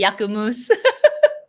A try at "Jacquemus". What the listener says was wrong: Well, it's a I think it's a French brand. If it's pronounced in French, it would be Jacquemus. Because if you pronounce it as a Y, that's more Spanish, which is not how they say it in French.